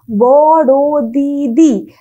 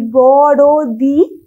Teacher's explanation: কিন্তু আমি যখন বলছি বড় দিদি, তারপরে আমি যখন বলছি বড় দি, দেখো একটা বাদ দিয়ে দিচ্ছি, যে দিটা বাদ দিয়ে দিচ্ছি, তাহলে একটা অক্ষর লোপ পাচ্ছে, একটা সম অক্ষর। এখানে যেটা ছিল বড় দিদি, এখানে সেটা হয়ে যাচ্ছে বরদি, একটা অক্ষর লোপ পেয়ে যাচ্ছে। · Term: সমাক্ষর